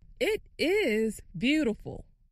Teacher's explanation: It is beautiful. makes the word is longer and louder.